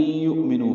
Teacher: واو مدہ ہے دو حرکات لمبا ہے